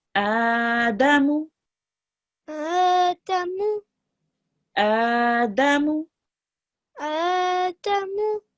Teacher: here we will have the alif 2 seconds long, dal and mim will be just 1 second long.